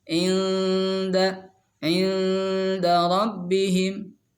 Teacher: Cara bacanya si nunnya dibaca samar, ya. Berdengung, kemudian siap-siap langsung ke makhraj dal. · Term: ikhfa aqrab